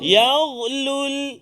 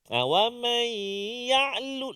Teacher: kalau ghain yang sukun ataupun yang mati baris dia biasanya kadang-kadang tertukar dengan huruf ain. Wa man ya'lul ain.